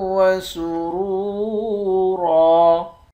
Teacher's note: را کو واو کے ساتھ ملا کر واو کو ایک الف کی مقدار کھینچ کر پڑھیں گے۔